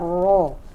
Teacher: roy juga adalah huruf tafkhim, dibacanya dibaca ro, dibaca tebal karena hurufnya berbaris atas, yaitu fathah